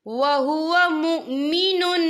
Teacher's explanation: تو یہاں پر ادغام ہوگا، تو ہم اسے غنّے کے ساتھ پڑھیں گے۔